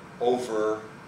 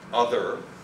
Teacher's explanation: single voiceless fricatives voiced intervocalically